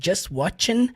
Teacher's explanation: O t ali do just não vai sair firmemente.